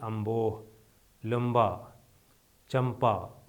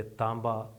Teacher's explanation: نون غنہ جب بے یا پے کے قبل آتا ہے تو اس کی آواز میم کی ہو جاتی ہے